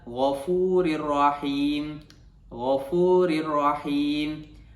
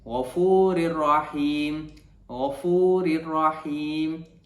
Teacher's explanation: Jika kita lihat dalam contoh ini, tanwin berbaris kasrah iaitu baris bawah bertemu dengan huruf ra, maka cara bacaannya ialah memasukkan bunyi tanwin tersebut ke dalam huruf ra tanpa dengung